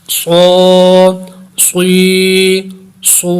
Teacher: صاد حروف مستعلیہ میں سے بھی ہے، اس لیے اس کو پر کر کے پڑھیں گے، موٹا کر کے